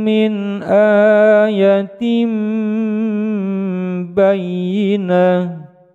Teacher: Tanwin bertemu dengan huruf ba menjadi bacaan iklab, dipanjangkan dua ketukan.